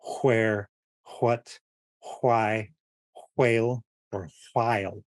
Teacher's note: You're kind of opening your mouth and blowing from the back of your throat. Almost like a silent whistle. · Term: voiced WH